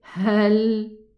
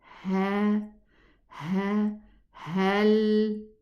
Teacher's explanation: The ha is from the furthermost part of the throat.